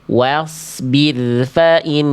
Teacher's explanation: Ya, tipiskan dulu wawunya. Wa, baru shotnya tebal. Wasbir fa'in.